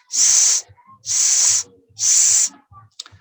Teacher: Fricative alveolar sounds. The first sound, S, again, voiceless, no vibration.